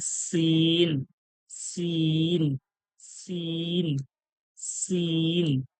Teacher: এই যে যা বললাম, জিভের আগা, উপরের দাঁতের আগা বা নিচের দাঁতের আগা মিলিয়ে যে জিভের আগাটা লাগছে যা, ঠিক সেইভাবে সিন বলবো ওইভাবে লেগে। সিন, দুটো দাঁত একই সঙ্গে লেগে জিভের আগাটা ওই দাঁতের মাঝখানেই যাবে